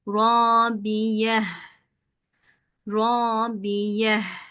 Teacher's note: Normalde ne olabiyet ta dersin ama hayır kapalı tde olmaz. Kapalı T'ye H sesine çevirerek okuyorsun.